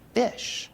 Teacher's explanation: they put their upper teeth on their lower lip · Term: F sound